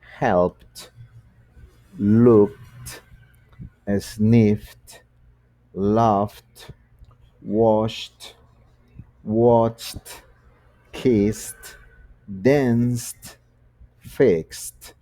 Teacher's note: cuando son voiceless, es decir, sin sonoridad, se le agrega ed, pero eso tiene un sonido t. Entonces el verbo help queda helped, looked, sniffed, laughed, washed, watched, kissed, danced, fixed.